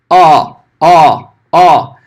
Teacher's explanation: Ele é entre o A e o O, não significa enfiar os dois, tá? Significa que não é nem tão aberto como o A, nem tão fechado como o O. É um meio termo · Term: komas